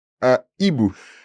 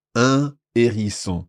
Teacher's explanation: So we stop after un and then say hibou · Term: H aspiré